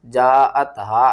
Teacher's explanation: جاءت ہا مد متصل ہے، 5 الف کے برابر کھینچنا ہے